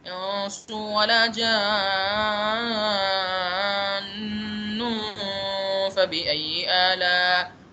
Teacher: ایک غنہ تو نون کے تشدید کی وجہ سے ہو گیا، دوسرا نون کے اوپر تنوین بھی ہے